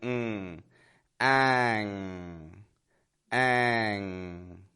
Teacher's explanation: you're not making a regular n like n but rather that you have the back of your tongue going to the back of your mouth · teeth it's down down low the back of my tongue however is high up touching that soft spot in the back of my mouth the same as kg